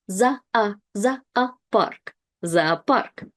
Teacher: you have 2 O's, and they both are unstressed. So we pronounce both of them as A